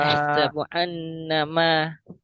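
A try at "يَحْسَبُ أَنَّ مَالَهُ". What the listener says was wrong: মা টানুন, একালি পরিমাণ। লাহু।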